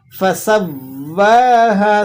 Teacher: سین باریک ہے، واو پر کھڑا زبر بھی ہے اور واو مشدد بھی ہے تو آپ نے اس کی بھرپور طریقے سے پراپر طریقے سے ادائی کرنی ہے.